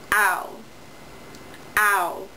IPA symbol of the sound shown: aʊ